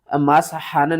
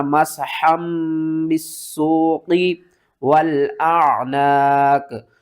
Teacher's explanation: اگلا حرف جو ہے وہ با سے شروع ہو رہا ہے، تو یہاں پر ہم نون کی آواز کو میم کی آواز میں بدل دیں گے۔